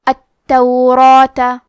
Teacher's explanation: حرف را کو اور اس کے بعد مد الف کو دونوں کو بھاری آواز میں پڑھیں گے کیونکہ مد الف اپنے پیچھے والے حرف کا حکم لیتا ہے تفخیم میں اور ترقیق میں.